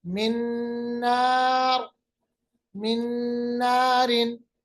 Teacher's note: नून साकिन को नून के साथ मिलाया